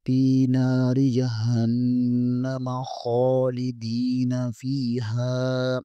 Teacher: دال زیر کے آگے یا مدہ ہے اسے بھی ایک الف کے کھینچیں گے